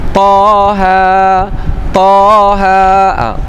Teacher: Taha, Taha, Ta 2 harakat, Ha 2 harakat, Taha 2 harakat. Jadi itu namanya mad asli harfi.